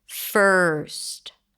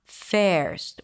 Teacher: But the secret is to transition smoothly and directly from the consonant to the R, skipping the vowel in the middle, no matter what vowel is written in, skipping it, there is no vowel, and making the R a little longer.